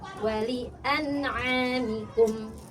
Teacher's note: Ain makhrajnya sama di tenggorokan sini ya, sama seperti ha di tengah ya